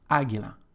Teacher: we've got the stress just on the first syllable